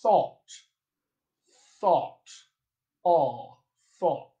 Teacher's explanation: the close mid back rounded vowel, existed in the General American accent